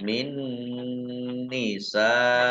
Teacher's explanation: Min nisaikum, nun sukun bertemu dengan huruf nun, bacaan idgham bi gunnah, masuk dengan mendengung, yaitu mendengung nun, ditandai nunnya ada tasdidnya.